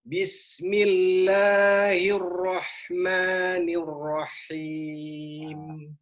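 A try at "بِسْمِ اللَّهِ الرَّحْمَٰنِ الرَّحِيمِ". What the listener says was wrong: Lebih ditahan lagi boleh? Bismillahirrahmanirrahim. Jangan tergesa-gesa untuk dilepaskan.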